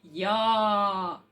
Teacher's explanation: в нас ротик відкритий як кружочок і ми вимовляємо я так але чується як А